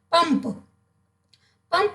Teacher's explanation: पंप में ध्वनि नाक से निकल रही है